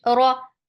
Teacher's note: for fatha, open your jaws. The sound is short, but it is heavy.